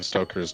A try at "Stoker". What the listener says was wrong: Stoker. Not Stroker.